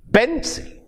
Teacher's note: In pencil, where we have two sound units, the first one is stressed and not the second one.